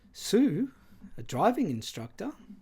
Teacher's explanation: the same Contour is stretched out across the two words driving instructor with the tonic Contour beginning on the first syllable of the first word driving · The first tone group, which is one syllable, Sue, is assigned both the interpersonal choice of this tone, the tone 2 plus rise, fall, rise contour, and tonicity, with the presence of this pitch contour assigning textual prominence to this word.